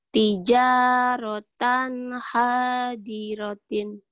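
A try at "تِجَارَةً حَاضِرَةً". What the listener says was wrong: Tan. Kok tintin Tan. Tijarotan. Tijarotan hadirotan.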